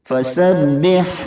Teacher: سین کی ادائیگی میں سیٹی جیسی آواز نکلنی چاہیے